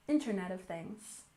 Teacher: We have stress on the first syllable Internet of Things